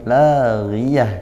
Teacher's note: La ghiyah, ghi tidak perlu terlalu tebal, la ghi tidak, tapi la ghiyah karena ghainnya berharokat kasrah, tafkhimnya nisbi atau berkurang